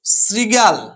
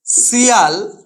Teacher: এই গ প্রথম ধাপে এই গ ব্যঞ্জন ধ্বনিটি বিলুপ্ত হয়ে গেছে গ ব্যঞ্জন ধ্বনিটি বিলুপ্ত হয়ে গেছে এবং পরবর্তীকালে গ এর পরিবর্তে তৃতীয় একটা ধ্বনি অন্তস্থ অ এর আবির্ভাব ঘটেছে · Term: শ্রুতি ধ্বনি